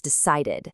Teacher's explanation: ed ending adds a whole new syllable that sounds like id.